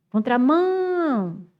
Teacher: Aí, quando eu demoro naquela sílaba, essa sílaba é a sílaba tônica. Demorei no mão. Contramão. Então, mão é a tônica. Então, eu passo, olha, um traço em mão e bota assim, oxit, pá e depois pró.